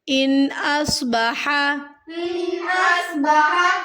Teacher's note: نون ساکن کے بعد اگلا حرف حروف ہلکی میں سے ہے تو ہمیں یہاں پر اظہار کرنا ہے، یعنی کہ ظاہر کرنا ہے نون کی آواز کو، بس لمبا نہیں کرنا ہم نے